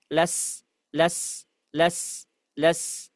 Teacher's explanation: Sin pangkal lidah tidak naik. · Kemudian zai ditambah dengan getaran. Jadi sin dia tipis dan juga ee ngalir biasa. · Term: saofir